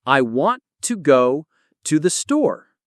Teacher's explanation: We stress want, go, and store. The rest is said faster. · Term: sentence rhythm